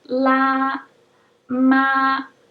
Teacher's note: the first tone is flat and high la ma you want to try to keep your voice even · is flat and high la ma you want to try to keep your voice even and high to the point of being monotonous for the whole duration of the syllable